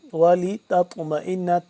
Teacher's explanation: لکم ولتطمئن تا زبر تط، ایک تو تا کو باریک اس طا کو موٹا کر کے پڑھیں گے